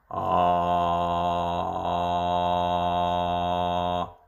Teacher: a very low vowel sound, like a low A sound, and there's like a little bit of a vocal fry in that. So like, yeah, so a low A sound.